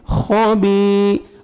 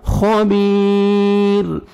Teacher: خا کو موٹا کر کے پڑھیں گے, اور با کو کھینچیں گے, یا مد ہے, یا ساکن سے پہلے زیر ہے.